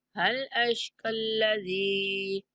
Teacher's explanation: زال کو کھینچ کے پڑھیں گے، یہ مدہ ہے زال کے بعد